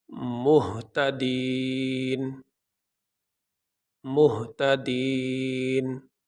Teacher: نون کے اوپر جو زبر ہے یہ نہیں پڑھا جائے گا، نون کو ہم ساکن پڑھیں گے